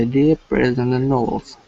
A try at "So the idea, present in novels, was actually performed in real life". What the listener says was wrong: Again, try to leave a little bit more space. So the idea, present in novels, was actually performed in real life.